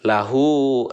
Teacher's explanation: Kalau misalkan mad silah qasirah itu cara membacanya pendek, tetapi pendek di sini maksudnya adalah 2 harokat. Lahu 2 harokat gitu ya, seperti mad tabi'i.